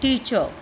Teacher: we will not pronounce the आर sound in टीचर, it will be टीचर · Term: आर हमारा साइलेंट रहेगा